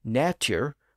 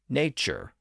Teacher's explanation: natur with its T sound became nature with its CH sound